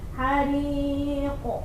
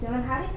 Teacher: Jadi qaf itu huruf tebal. Jadi ketika qalqalah pun kita harus menampakkan pantulannya harus tebal.